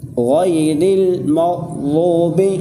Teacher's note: غین کا مخرج یہ ہے کہ حلق کا حصہ جو منہ کی طرف والا ہے وہاں سے غین ادا ہوتا ہے